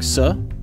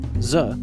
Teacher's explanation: place your hand on your throat while sang sa' vs z you will feel the vibration of the vocal folds only while saying za